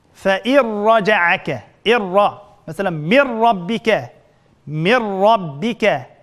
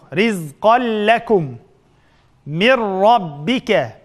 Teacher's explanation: Degandek mushunda sakinlikning tanvini keyinda ro kelgan chaqda g'unnasiz idg'am qilamiz. Fa irraja'aka rizqan lakum.